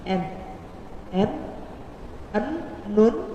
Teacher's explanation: Terus bacaannya niku jelas, boten samar, boten berdengung, boten sing atau itu pun boten. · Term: izhar